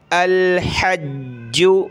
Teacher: الحج حمزہ لام زبر الح، جیم زبر حج، جیم پیش جو، الحج، حا کو گلے سے نکالیں اور جیم کو ہم نے سخت کرنا ہے تشدید کی وجہ سے